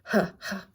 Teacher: It's hard to do it because it's not voiced, but the huh sound. Just breath almost.